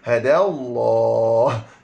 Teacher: lam yang kedua tu lam tebal